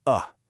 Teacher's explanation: Your mouth is only half open and your lips are relaxed, totally unrounded. All the work is being done by pulling your tongue back. The sound actually comes from your throat. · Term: the final e